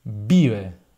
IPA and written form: ˈbiβ̞e (vive)